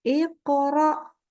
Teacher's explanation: jadi pantulannya dengan huruf berikutnya itu nyambung ya suaranya tersambung tidak boleh kita tambahkan huruf hamzah sukun · nyambung ya bunyi pantulan qaf kepada ro. Iqra, yang tidak boleh begini. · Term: Qalqalah, qalqalah